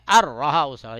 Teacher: ادغام تام بولتے ہیں. اس میں نون ایک دم ہی سے حذف ہو جاتا ہے. یہ نون جو ہے اس کو کچھ بھی شمار قطار میں پڑھنے میں نہیں لائیں گے صرف لکھنے میں آئے گا. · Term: ادغام بلا غنہ